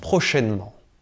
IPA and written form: pʀo.ʃɛn.ˈmɑ̃ (prochainement)